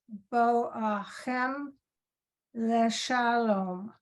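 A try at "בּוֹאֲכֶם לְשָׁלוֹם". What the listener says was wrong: Very nice, yes, thank you.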